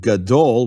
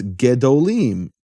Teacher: the kamat of yah, that's the name of the vowel there, kamat changes to shva when the word is elongated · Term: vowel shift